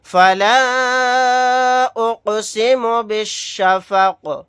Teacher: قاف ساکن ہے تو یہاں پر قلقلہ کر کے پڑھیں گے